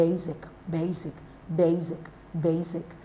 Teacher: basic basic basic basic is stressed on the first syllable